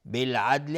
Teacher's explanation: بالعدل الف لام قمری دال قلقله میخواد چون ساکنه